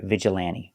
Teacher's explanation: n t between vowels you don't hear the t vigilante vigilante you can pronounce the t if you want to · You don't have to pronounce a T because NT between vowels, you don't hear the T.